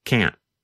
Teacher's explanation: Instead of pronouncing the T, your tongue just comes to a stop against the hard part of the roof of your mouth just behind the upper front teeth. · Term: held T